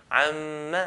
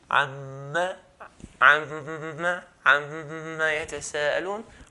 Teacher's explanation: I would hear nasalization sound. So if I say عَمَّا and hold my nose, عَمَّا يَتَسَأَلُونَ, we can hear that nasalization sound. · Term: ghunna sound